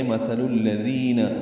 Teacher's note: مثل الذین ذال نرمی سے ادا ہوگا، دی یا مدہ ہے